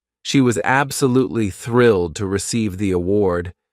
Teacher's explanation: you notice how some words are stressed. Thrilled. Award, while others are spoken quickly. She was.